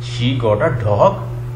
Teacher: मैंने इंटोनेशन को लास्ट जो डॉग है उसमें बिल्कुल ऊपर उठा दिया है